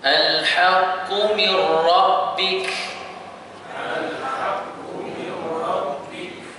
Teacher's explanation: kita kena memasukkan nun ini ke dalam huruf ra secara keseluruhannya tanpa ada dengun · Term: Idgham bila gunnah